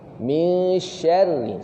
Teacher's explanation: Ra yang bersabdu, ra baris bawah yang bersabdu baca nipis.